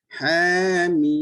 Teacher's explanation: jaga dia punya harakat dia, 6 harakat, ha 2 mim 6